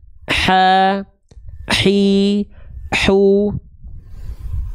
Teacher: ketika melafalkan H kecil, katup epiglotis ini akan menyempit ke arah dinding tenggorokan.